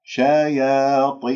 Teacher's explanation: وهنالك من يقول حتى أنه لا يفخمها مخافة الطاء بعدها، يقول شيا شيا، يبتسم، يسحب اللسان، يبسط اللسان، تخرج عندي الياء ممال، الألف ممالة، وهذا خطأ. شياطينهم، الطاء مكسورة مفخمة، ما أجيبها مرققة